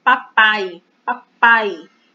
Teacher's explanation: Papai, papai. O A é pronunciado com mais força. O I ele é pronunciado com menos força. Então, por isso, ele é a semivogal. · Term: ditongo